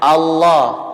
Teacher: Itu disebut dengan taglid atau tebal. Ya, sangat tebal, maka menghasilkan konsonan huruf O.